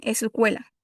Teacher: Agregan una vocal para que sea más fácil pronunciar.